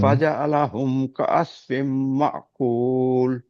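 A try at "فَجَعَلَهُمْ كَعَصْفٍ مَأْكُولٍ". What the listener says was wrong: শুধু আইনের উচ্চারণগুলো একটু যদি দিতেন খুব ভালো হতো। আপনি এই আইনগুলো জানেন, যেহেতু আপনি মুখস্থ বলে যাচ্ছেন, খেয়াল করছেন না।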